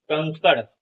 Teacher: यह स्वर के बाद आने वाला है जिसकी ध्वनि नाक से निकलती है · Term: अनुस्वार